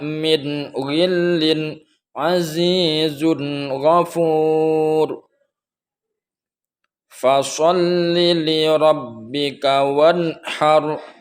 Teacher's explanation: suara nun mati atau tanwin tersebut terang, berbunyi jelas tanpa ada dengung